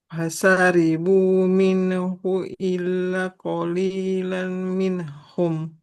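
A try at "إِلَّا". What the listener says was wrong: Illa. Nah, di sini selain bertasdid, lamnya harus panjang. Fathah bertemu alif. Illa qalilam minhum.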